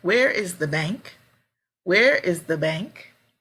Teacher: it's a question where is the bank where is the bank my voice is going down